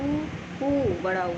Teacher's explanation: ओष्ठ स्वर जो ओठों यानी होस्ट हमारे होठों का यूज़ करके बोला जाता है